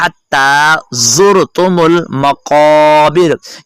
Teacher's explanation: हत्ता हलक के दरमियान वाले हिस्से से, हत्ता ज़ुरतुमुल मकाबिर, यानी जा पढ़ना है, राल नहीं पढ़नी, तलफ़्फ़ुज़ का ख्याल रखना है।